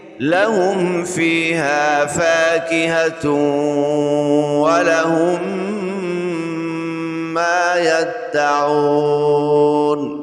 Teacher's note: یہاں تشدید کو باقی رکھنا ہے اور دال پہ قلقلہ بھی کرنا ہے. ذرا رک کر اس حرف کو ادا کرنا ہے.